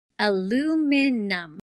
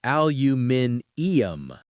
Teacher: The British version has an extra I in the spelling, so they add a whole extra syllable.